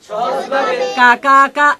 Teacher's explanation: জিহ্বার মধ্যবর্তী তার বরাবর উপরের তালুর সাথে লাগিয়ে সহজভাবে কা কা কা আওয়াজে যার উচ্চারণ করতে হয়, এর নাম কাফ, এর নাম কাফ।